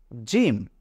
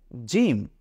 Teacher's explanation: জিহ্বার মধ্যখানকে ঠিক তার বরাবর উপরে তালুর সঙ্গে লাগিয়ে উচ্চারণ করুন জিম